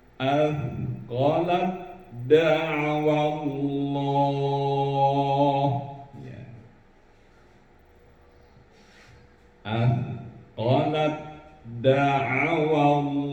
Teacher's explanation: Ta dimasukkan ke dalam huruf dal. Atau dal dengan huruf ta.